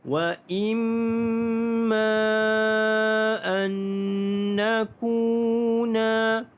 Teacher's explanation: nun mati bertemu dengan nun idgham ma'al gunnah. Anna didengungkan, masuk dan dengung 2 harakat.